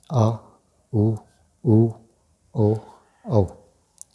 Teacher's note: इसके उच्चारण में जिह्वा के पश्च भाग पर वायु का प्रभाव पड़ता है।